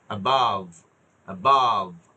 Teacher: ভা সাউন্ডে উপর, এটা লেবিওডেন্টাল, উপরের দাঁত নিচের ঠোঁট, above, above। হ্যাঁ, প্রথমে বাইলেবিয়াল দুই ঠোঁট, বা উচ্চারণ হবে দুই ঠোঁটে, আর ভা উচ্চারণ হবে দাঁতে ঠোঁটে।